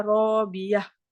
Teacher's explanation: jika huruf akhirnya tamarbutoh, maka wakafnya dengan menggantinya menjadi ha sukun, ha besar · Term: wakaf ibdal